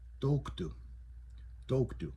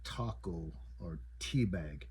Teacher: So a T with nothing above it, nothing beside it, no diarrretic marks. It's going to make a muted kind of T sound. So it's almost going to sound like a D, like a sharp D.